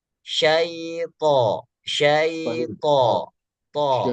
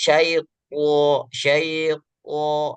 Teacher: huruf to-nya sepertinya kedengarannya terlalu melekit, terlalu tebal